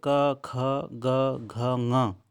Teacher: वर्ण और विसर्ग को हम कंठ से बोलते हैं इसका उच्चारण स्थान कंठ है